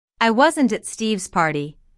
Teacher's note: notice that the emphasis here is on at although prepositions normally have weak stress